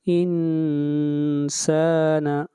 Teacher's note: نون کے اوپر اخفا ہوگا، آواز ناک میں جائے گی